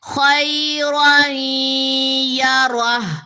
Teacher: تنوین کے بعد اگر یا آ جائے، تنوین یا نون ساکن کے بعد اگر یا آ جائے تو تنوین کے اندر چھپی ہوئی نون وہ نہیں پڑھی جائے گی. یہ دونوں جو زبریں ہیں وہ یا سے جا کے ملتے ہوئے ادغام کرتے ہوئے غنہ لیں گی.